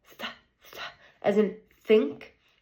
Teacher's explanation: The place is, your tongue is between your teeth. It is, the manner of articulation is a fricative, and is an unvoiced sound.